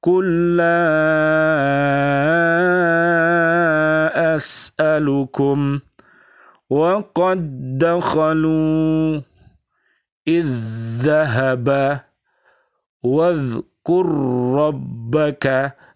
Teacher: Cara membacanya memasukkan huruf yang pertama ke dalam huruf yang kedua tanpa mendengung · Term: idgham mithlain